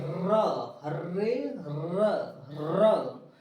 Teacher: र बोलेंगे तो जिभिया कंपन कर रही है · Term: प्रकंपित व्यंजन